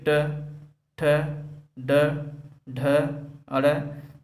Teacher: हमारी जीभ को जो है उल्टा होकर हमारी मूर्धा को स्पर्श करती है।